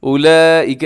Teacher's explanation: اولئک اس میں بڑی مد ہوتی ہے جسے مد متصل کہا جاتا ہے ، جس کا کرنا واجب ہوتا ہے۔ اصحاب النار، الصاد موٹا